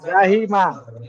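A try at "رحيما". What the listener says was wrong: আচ্ছা, যা নেই, ওটা র আছে, নোক্তা থাকলে যা হতো, নোক্তা নেই এখানে। রহিমা, তাহলে বানানে করেন।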